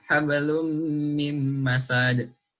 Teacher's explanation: dibaca idgham, bukan habalun min masad